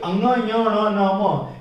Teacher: नासिक्य व्यंजन इसलिए कहते हैं क्योंकि इनका उच्चारण नासिका से होता है। इन पांचों का उच्चारण नाक से भी होता है।